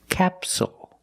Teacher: the stress is on the first syllable, so the second syllable is short. It's not capsule, it's capsule, with a dark L at the end.